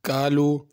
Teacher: کالو اس میں چھوٹا کاف ہے، اس کو قالو بڑا قاف نہیں پڑھنا